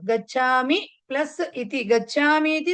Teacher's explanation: ఇ ఈ రెండు ఇకారాలు కలిసి హ్రస్వ ఇకారాలు దీర్ఘ వచ్చిందన్నమాట